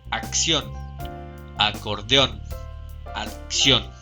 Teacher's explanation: llevan el acento de intensidad o sílaba tónica en la última sílaba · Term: palabras agudas